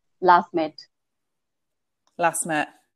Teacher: And one more last. We can drop the T.